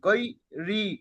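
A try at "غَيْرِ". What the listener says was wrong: রয়াজে রি, টান হবে ইয়ায় মাদ্দা। পড়েন, গয় নিয়ে যাবার গয়।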